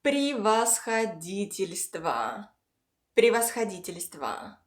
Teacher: But the first “o” in the “во” gives a reduced “schwa” sound. · The unstressed “o” and the one at the very end of the word gives a short “a” sound. · All unstressed “e’s” give a short “и” sound.